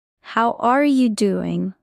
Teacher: Stress is on are and do.